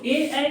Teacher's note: तो अ का उच्चारण स्थान कंठ और ई का उच्चारण स्थान तालु, तो कंठ तालु हो जाएगा। तो ए का उच्चारण स्थान कंठ तालु होता है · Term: संयुक्त स्वर